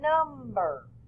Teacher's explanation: i accented the word instead of saying number we say number we stress that first syllable harder longer